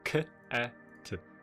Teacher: you can definitely hear the aspiration after the k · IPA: [kʰæt̚]